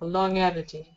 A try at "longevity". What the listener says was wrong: Longevity. For whatever Reason, you pronounce the G.